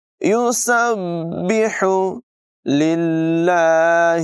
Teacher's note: با حروف قلقلہ میں سے مشدد ہے، اسے ذرا رک کر جماؤں کے ساتھ پڑھیں گے۔ ہا حلق کے درمیان والے حصے سے نمایاں ادا کریں گے